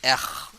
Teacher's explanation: R is said at the back of the throat, like I told you before, the throat of with the tongue at the bottom of the mouth.